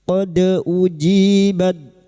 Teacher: Qod uji dal sukun huruf dal yang mati asli di tengah kalimat qalqalah sugro. Jangan lupa dipantulkan. Qod ujibad uji kasrah diuti ya sukun dua harakat mad thabi'i.